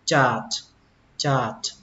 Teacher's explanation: Âm chờ mạnh, âm chờ bắn hơi và kết thúc bằng âm T.